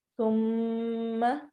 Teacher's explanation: تا کو نرمی سے میم کے اوپر غنہ کرتے ہوئے, جب بھی نون اور میم کے اوپر شد داری ہو, ڈبلیو کی طرح کا سائن ہو, تو وہاں پر ہم نے ناک میں آواز لے جا کر غنہ کرنا ہوتا ہے